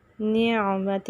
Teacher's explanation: عین وسط حلق سے